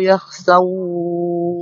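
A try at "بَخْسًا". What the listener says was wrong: yakhsa. Pakai ba ya, bukan pakai yakhsa tapi bakhsa.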